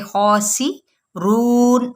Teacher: کھڑا زبر بھی ہے تو اس کو ایک الف کے برابر کھینچ دیں گے. خاسی رون، رون رون نیزل ساؤنڈ بالکل نہ آئے، ٹھیک ہے.